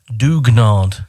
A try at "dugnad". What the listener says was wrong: But you don't need to go up that height. Dug. Dugnad. Nad. Dugnad. It's a long vocal.